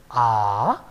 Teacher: a is a back open unrounded long vowel